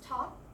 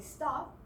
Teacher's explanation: when we pronounce top, the T that goes in front is aspirated. When we say stop, because T is behind the S, it's not aspirated.